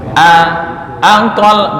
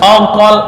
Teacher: Hamzah dibaca fathah itu tetap tarkik